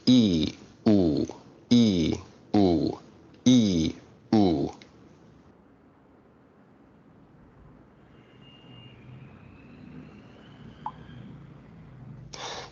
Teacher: you may notice that your tongue is moving forward and backward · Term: backness